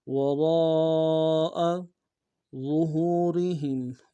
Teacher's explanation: فنبذوہ وراء ظہورہم، وراء میں را کو موٹا ادا کریں گے، را کے ساتھ الف مدہ ہے، مدہ کے اوپر مدہ اصلی ہے، کم سے کم تین انداز میں کھینچیں گے، حمزہ کو نم سے ادا کریں گے۔